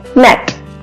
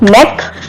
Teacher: Now short vowel E sound is used for the pronunciation of these words. Different sound that occur at final position, that is T and K.